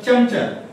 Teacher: जर जिभेचा शेंडा जर तुम्ही टाळूला लावला तर चमचा, म्हणजे त्याच्यामध्ये य गाईचा आल्यासारखा भास होतो. जीभ जर तुमची टाळूला लागली की गाईचा य जोडल्यासारखा भास होतो. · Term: तालव्य